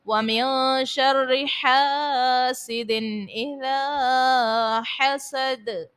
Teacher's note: نون ساکن کے بعد شین ہے حرف اخفا کا، غنہ کریں گے، رو کو باریک پڑھیں گے، الف سے پہلے زبر ہے، الف مدہ، اور پھر اذا میں الف سے پہلے زبر ہے، الف مدہ، اور دال کو ساکن کرنے کی صورت میں خوب ظاہر کریں گے۔